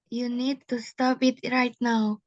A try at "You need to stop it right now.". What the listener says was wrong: Yes, well done.